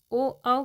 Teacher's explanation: कंठ प्लस ओट यह दोनों से मिलकर ओ का उच्चारण होता है